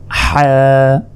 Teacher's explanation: হলকের মধ্যভাগ হতে হা উচ্চারিত হয়, হা। গলায় চাপ দিয়ে এটি উচ্চারণ করার চেষ্টা করুন, হা হা।